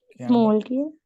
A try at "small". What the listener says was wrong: is එන්නේ is නෙවෙයි S තියෙන පුළුවන් හැමතැනම s විතරක් දාන්න. is දාන්න එපා. is කියන එක විශේෂයෙන් කොහේ හරි තිබ්බ නැත්නම් මට එහෙම සෙට් වෙන්නේ නැහැ. small හරි පුළුවන් තරම් එතකොට අර ෆ්ලුවන්සි එක තියෙන small. is නෙවෙයි small right.